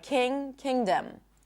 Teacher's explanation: when we have other suffixes, like king - kingdom, we do not pop the G